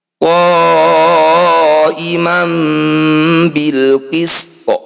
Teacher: akhir bacaan ketika disukun E ketika dibaca berhenti ini harus disukun to yang sudah disukun harus dibunyikan qolqolah atau memantul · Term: qalqalah